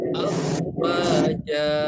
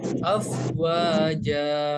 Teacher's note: Jadi cara membacanya harus dibaca panjang 2 harokat ya. Tanwin fathahnya berubah menjadi fathah dan dibaca panjang 2 harokat.